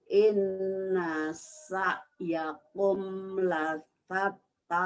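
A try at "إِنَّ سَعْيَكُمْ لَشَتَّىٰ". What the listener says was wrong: Terbalik, itu ujungnya gede. Lasyatta shin. Yang awal, yang pertama kecil, yang ini lasyatta. Sin gedenya yang itu shinnya. Inna sa'yakum lasyatta.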